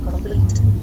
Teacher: second choice is to divide a after the first consant and stress the second syllable as in complete